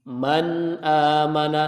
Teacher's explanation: Pada saat nun sukunnya dilafadzkan bertemu dengan huruf hamzah, maka dia ada gunanya, tapi gunanya kurang. Man amana beda dengan yang ikhfa tadi. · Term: naqis